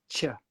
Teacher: With chip, you need the tongue closer to the teeth to get the ch.